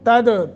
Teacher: تد دال ساکن ہے، یہاں قلقلہ کریں گے